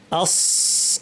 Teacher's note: দেখেন এই যে এখানে জিহ্বার সামনাটা একই জায়গায় লেগেছে কিন্তু মাঝখান এবং পেছন উঠে গিয়ে আওয়াজকে উপরে ঠেলে দিচ্ছে ভারী আওয়াজ হবে